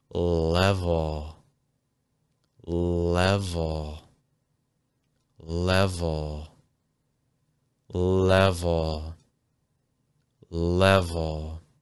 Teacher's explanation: But when an L appears at the end of a word, you're more likely to use a dark L sound. Actually lower the front of your tongue. Raise the back of your tongue. So level has two different L sounds.